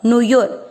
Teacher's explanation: नु यू दोनों मात्रा छोटी, लंबा नहीं खींचना